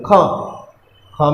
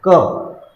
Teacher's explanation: क वायु कितनी निकल रही है? ख, ख में वायु ज़्यादा जा रही है और क में कम जा रही है